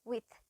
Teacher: with කියද්දී අපි voiced th sound එකක් නෙවෙයි පාවිච්චි කරන්නේ, unvoiced th sound එකක්. එතකොට අපි with කියන එක pronounce කරද්දී අර vibration එකක් එක්ක පාවිච්චි කරන්නේ නැහැ th sound එක.